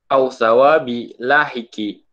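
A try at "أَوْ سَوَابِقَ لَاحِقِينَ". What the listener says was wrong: sawabin, itu tanwin semua, au sawabin lahikin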